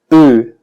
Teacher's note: Actualmente me parece en un acento estándar británico es más cercano a una vocal completamente central y también con la boca ligeramente más abierta que en una pronunciación antigua de hace 40, 50, 60 años o más.